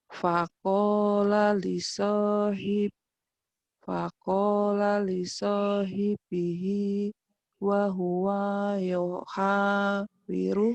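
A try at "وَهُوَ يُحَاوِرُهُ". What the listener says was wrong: Pendek. Wahuwa yuha. Wahuwanya pendek.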